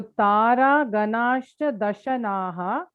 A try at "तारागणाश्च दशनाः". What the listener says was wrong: So Dashanash. And ish put nude. Instead of the visarga, put a ish there. Tara Ganashcha Dashanash